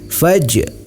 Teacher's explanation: Cara membacanya yaitu huruf jim dipantulkan. Faj, pantulkan sedikit ya. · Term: qalqalah sughra